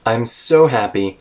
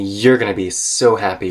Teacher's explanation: she's comparing I'm so happy kind of with a rising tone you're gonna be happy kind of with a falling tone